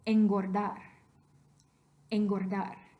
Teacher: this N that comes before a G, the reason that we're talking about the N with the tail, velar allophone of N, is because the G that comes right after it is velar.